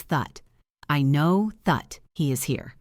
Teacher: The vowel turns into a schwa.